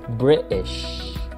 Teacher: Just with the word British, there is no need to accentuate the T sound. In fact, you may not hear any T at all. Instead, what you may hear is British.